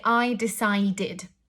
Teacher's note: And the three rules that I'm going to talk about kind of make sense, because if we take a verb, for example, decide ends in a d sound. And when a verb ends in a d sound, the ed changes to kind of like an id sound